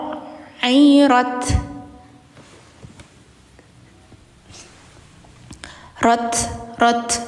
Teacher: ujungnya itu ada nafas mengalir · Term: Hames